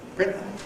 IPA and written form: ˈprɪnʔə (printer)